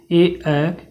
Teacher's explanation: यह कंठ तालू से होते हैं तो कंठ तालव्य है कंठ तालू से कंठ प्लस तालू से इसका उच्चारण स्थान होता